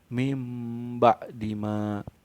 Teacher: Jadi huruf nun sukun atau tanwinnya tuh diganti suaranya tuh menjadi mim, suaranya jadi mim ba dima. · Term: iklab